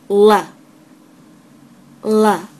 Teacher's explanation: the air doesn't come from The Middle the air comes through the sides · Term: light L